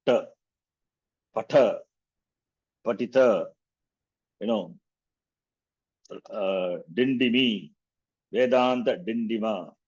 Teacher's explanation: So when you utter the tongue, you have to curl your tongue and touch the roof of the mouth. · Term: cerebrals